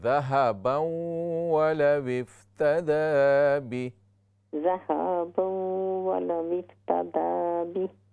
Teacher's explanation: इन्नल्लज़ीना कफ़रू वमातू वहुम कुफ़्फ़ारुन फलन युक़बल मिन अहदिहिम मिल्उल अर्दि ज़हबन वलव इफ्तदा ज़हबन, हाँ को लंबा ना करें